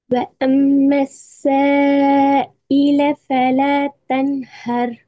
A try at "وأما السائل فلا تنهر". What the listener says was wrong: நீட்டுறது போதாவே. மத்தினுடைய அடையாளம் வந்தா எத்தனை அளவு நீட்டணும் படிச்சாச்சு. இன்னும் கொஞ்சம் லைட்டா பயமில்லாம 3 செகண்ட் எடுக்கும். إلى فلا تنهر.